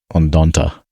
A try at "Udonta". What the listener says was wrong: Udonta, yeah. Well, it sounded like you were saying Undanta, like there was an extra N in there.